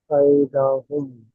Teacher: এখানে ইয়ালিন হবে, নরম আওয়াজে তাড়াতাড়ি পড়তে হবে।